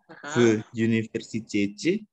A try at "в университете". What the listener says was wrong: Так, в университете ya, bukan you. You kalau bahasa Inggris. В университете с преподавателем. Jangan в университете, itu kan logat Inggris ya.